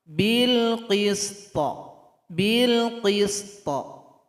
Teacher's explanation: Cara berhenti di sini, to disukunkan, berikan bunyi qalqalah.